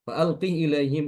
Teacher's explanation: H sukun itu diganti dengan kasrah untuk Imam Ibnu Katsir kemudian diberikan Silah Silah dengan ya Iya sukun faqihi